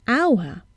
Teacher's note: We see an H, but we hear a vowel sound at the beginning, hour, and not hour.